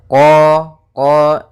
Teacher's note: makhraj daripada huruf q yaitu dari pangkal lidah kita pangkal lidah sehingga huruf qfnya harus dibaca dari pangkalnya supaya lebih jelas pangkal